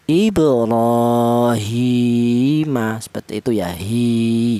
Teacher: Walaupun ini tidak ada ya-nya mati, akan tetapi harokat ini, harokat kasroh ini, berdiri ini menunjukkan bahwa huruf H ini dibaca panjang, yaitu panjangnya 1 alif atau 2 harokat atau 2 ketukan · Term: matobi'i